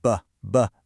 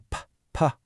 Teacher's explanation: Now, make a long BBB sound. Feel that little hum, that vibration. Okay, now do a p-p- sound. Nothing, right? It's just a puff of air.